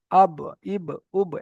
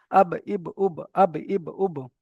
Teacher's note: দুই ঠোঁটের ভিজে অংশ থেকে উচ্চারিত হয় বা